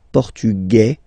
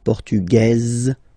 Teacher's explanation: it will be only in this z sound the difference between the masculine form and The Feminine form · masculine portug you don't pronounce the s feminine form portuges you pronounce this z sound